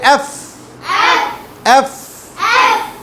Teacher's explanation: নিচের ঠোট উপরের দাঁত মিলবে